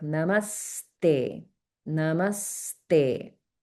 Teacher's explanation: Okay, so I'm exaggerating a little bit so that it's clear, but you can hear the sort of doubling effect on the first sound in the conjunct syllable